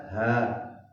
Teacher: Ha yang bulat-bulat itu di sini pangkal tenggorokan